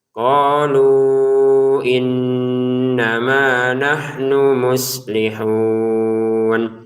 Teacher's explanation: Innama panjang karena ada alif.